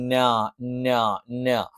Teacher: ന നാവിന്റെ അറ്റം 2 മുൻപല്ലുകളുടെ അഥവാ മേലെ വരിയിലുള്ള 2 മുൻപല്ലുകളുടെ മോണയുടെ പിൻഭാഗത്ത് വെച്ചുച്ചരിക്കുന്നു.